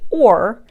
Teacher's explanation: or is also more of a retroflex r